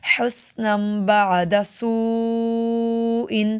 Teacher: شد کی وجہ سے تھوڑی سی باؤ ڈالیں گے، بدلا حسنم، یہاں پر نون کے آخر میں میم کی آواز آئے گی